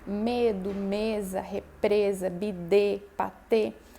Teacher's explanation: o E fechado é o E com som já parecido com o E da língua castelhana, sim, com a boca semi-fechada.